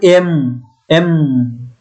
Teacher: মুখ বন্ধ হয়ে গেছে, নাক দিয়ে বাতাস বের হচ্ছে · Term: নাসাল